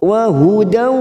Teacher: Nun sukun atau tanwin bertemu dengan huruf waw, siap masuk pada huruf waw, kita tekan selama 3 ketuk atau 3 harokat. Wa hudaw namanya bacaan idgham digunah.